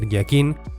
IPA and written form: jakin (jakin)